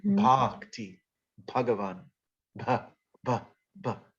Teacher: It's got a little bit of air in it. Just let some air out. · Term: aspirated